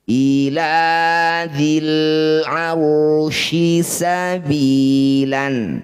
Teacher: sifat namanya tafasyi, mengalirnya suara ya ke seluruh rongga mulut